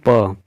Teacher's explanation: प बोलने से दोनों ओष्ठ जो है आपस में सट रहे हैं